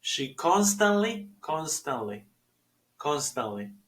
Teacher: No hay necesidad de pronunciar la T ahí y decir constantly.